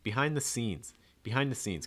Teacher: you want to stress scenes